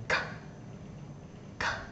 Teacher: Chúng ta bật âm thanh này. Đây chỉ là âm vô thanh nên chúng ta chỉ bật hơi ra thôi nhé